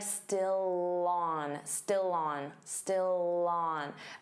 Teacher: Notice how still and on link together, and you'll hear that L sound on. So it will sound like still on, still on, still on.